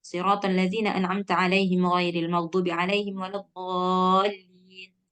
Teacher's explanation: Mad lazim musaqqal kalimi dia 6 harkat.